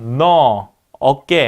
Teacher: 자, 혀의 위치가 오를 발음할 때보다는 전체적으로 낮아지고요. 혀의 뒷부분이 오보다는 낮고 아보다는 높은 그런 상태에서 입술을 펴고 발음한다. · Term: 후설 평순 중저모음